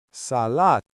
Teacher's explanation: stretch that first 'A' and hold the 'T' for a split second · It's like a tiny hiccup in the middle of the T.